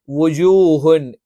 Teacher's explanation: ജ നാവിന്റെ മധ്യവും മേലെ അണ്ണാക്കുമാണ്.